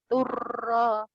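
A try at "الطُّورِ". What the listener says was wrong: ya, jangan ini turu, turi. Tuhnya panjang. min janibit turi.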